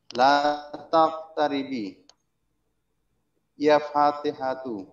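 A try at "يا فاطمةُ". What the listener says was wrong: ইয়া ফাতেমাতু, ওটা মিম, ইয়া ফাতেমাতু, হে ফাতেমা,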